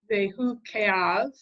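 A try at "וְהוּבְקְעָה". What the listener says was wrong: No. V'huv ke'ah. It ends with a vowel, not with a consonant.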